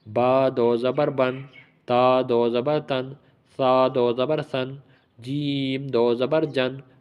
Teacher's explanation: تنوین پڑھتے ہوئے ناک میں آواز چلی جاتی ہے